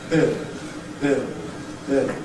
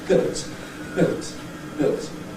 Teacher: So the /t/ exerts an influence not only on the /ɪ/ but also on the /l/ in ‘built’ /bɪlt/. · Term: Pre-Fortis Clipping